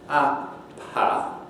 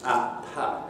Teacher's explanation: you should be able to hear a little puff of air, as it were, when I release the articulators for the P sound.